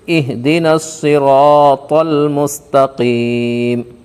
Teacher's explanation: میم کے اوپر زبر ہے، زبر کو حالت وقف میں جزم سے بدل کر پڑھیں گے